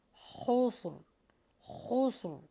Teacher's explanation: خوا کا مخرج ہیوی لگائیے اور را کو جما کے لگائیے گا